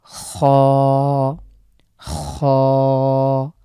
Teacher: এই খ লেটারটি আমাদের কণ্ঠনালী শেষখান থেকে উচ্চারিত হয় · গলার একদম আমরা যে গড়গড়া ভাব আছে অনেকটা এরকম আসবে এটা উচ্চারণে আমরা এক আলিফ টানবো আপনারা লক্ষ্যই করছেন এখানে কিছু